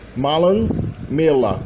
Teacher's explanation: the na was melted with the L, and you have a geminated double L, because milna becomes mela, and there was also a vowel shift in the middle.